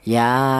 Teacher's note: Berhubung ini ada alif, cara bacanya dua harakat lebih panjang dikit atau dua ketukan. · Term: mad thobi'i